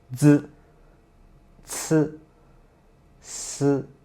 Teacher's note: we almost use the same position to produce the 3 initials